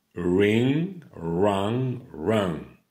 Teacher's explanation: On ne prononce pas le G.